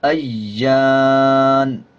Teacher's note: جب وقف کریں گے نون کے اوپر جو زبر ہے اس کو سائلنٹ کر دیں گے اور نون کی آواز کو آدھا پڑھیں گے